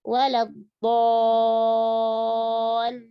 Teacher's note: Jadi 6 harokatnya tebal. Pindah ke lam langsung tipis. Waladhdallin.